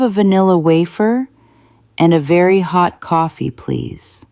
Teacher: He bites his lip for vanilla. He makes a circle for wafer. He drops his jaw for coffee. He sticks his tongue out for the.